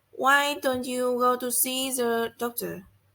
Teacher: the pitch goes up at the beginning and gradually down at the end. For example, why don't you go to see the doctor? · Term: Questions functioning as suggestion